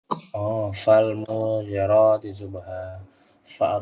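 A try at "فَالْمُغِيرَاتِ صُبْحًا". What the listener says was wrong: Bukan. pendek atau panjang munya? Nah, pendekkan. Jangan dipanjangkan. Fal mughirati.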